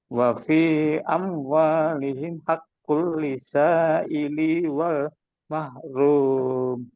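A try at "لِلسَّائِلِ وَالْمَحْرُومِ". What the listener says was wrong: Oke, listnya ditekan ya karena sinnya bertasdid. Oke, sambung ili wal mahrum. Jangan ili wal mahrum, tapi lisa ili wal mahrum.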